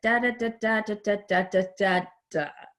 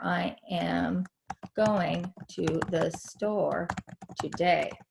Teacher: the intonation in the English language typically is like a da da da da da da da da da da, and we end going down